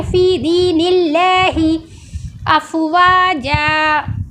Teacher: अल्लाह के नाम से पहले ज़ेर आ रहा है तो इसको गोल नहीं पढ़ा जा रहा। अगर हम इसको फ़ी दीनिल्लाहि पढ़ेंगे तो रॉन्ग हो जाएगा, इसको बारीक पढ़ेंगे।